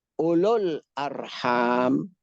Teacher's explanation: Wawu zaidah. Ulul arham enggak boleh dibaca panjang wawunya